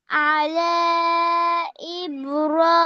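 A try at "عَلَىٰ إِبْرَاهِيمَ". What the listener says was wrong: জি, টান হবে না, দেখো তো। জজমালা ইয়া, আলা ইব্রাহিমা।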